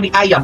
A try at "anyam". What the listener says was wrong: Pakai N. Nggak pakai N. Anyam. Dianyam.